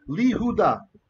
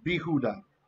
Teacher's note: the yod has lost its value as a consonant, and he's part of the vowel.